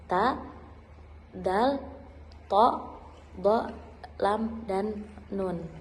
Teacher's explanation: yang dimana ujung lidah itu menyentuh gusi dan gigi atas. Bunyi yang dihasilkannya itu huruf ta, dal, to, do, lam, dan nun. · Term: apicodentoalveolar